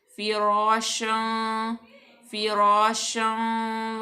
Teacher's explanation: उसके बाद फ़ा हरूफ शफ़िया, फ़ा मकसूर, रा अलिफ अलिफ मद्दा भी आ गई और रा यहाँ पे पुर पड़ी जाएगी क्योंकि रा मफ्तू है